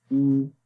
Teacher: जब पेश पढ़ेंगे तो होंठ गोल हो जाएंगे लेकिन लंबा नहीं करेंगे